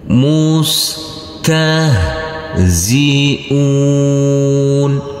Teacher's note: huruf Sin tidak boleh dipantulkan karena ini bukan bacaan Qalqalah ta huruf ha juga karena bukan bacaan Qalqalah huruf ha yang bersukun ini maka tidak boleh dipantulkan